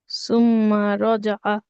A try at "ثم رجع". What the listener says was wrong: মিমি টান হবে না আপু। ثم رجع.